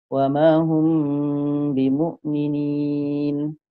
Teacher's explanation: Mim tu dia tak sempurna lagi bunyinya dan pun mim ni dah seolah-olah disambut oleh bunyi ba. Wa ma hum bimu'minin. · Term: ikhfa syafawi